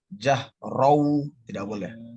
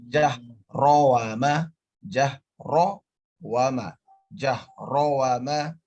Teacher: Antara ro dengan waw tidak boleh digabung.